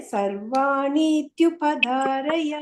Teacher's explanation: ಆ ಇತಿ ಇದು ಸೇರ್ಕೊಂಡ್ಬಿಡುತ್ತೆ ಟ್ಯೂ ಅಂತ